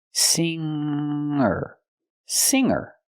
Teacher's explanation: I cannot pronounce the G sound the hard G in this word I have to use a nasal sound